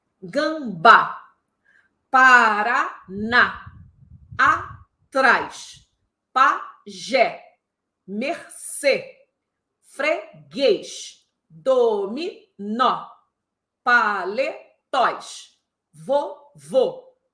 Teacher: eu marquei bem a tônica para vocês entenderem que a tônica tem que está no final